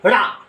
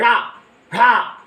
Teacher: देखो बोल लोगे ड़ा ड़ा बोल लोगे, तो इनके उच्चारण में जीभ ऊपर उठती है और नीचे त्राक से गिरती है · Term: उच्छिप्त व्यंजन